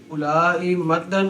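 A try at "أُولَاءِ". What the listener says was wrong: او نہیں پڑھنا واؤ نہیں پڑھنی اب پلا ہوئے اولا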